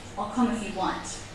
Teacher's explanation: you can see that if is one of the words that is not stressed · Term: function words